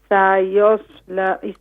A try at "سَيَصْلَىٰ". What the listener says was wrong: سین کو مت کھینچیں. سیصلى سیصلى نہیں سین کو مت کھینچیں. سیصلى نہیں، سیصلى سیصلى ماشاء اللہ